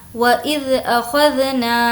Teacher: نا کو کھینچ کر پڑھیں گے کیونکہ یہاں پر الف مدہ ہے۔ الف مدہ کا مطلب ہوتا ہے الف جس سے پہلے زبر ہو۔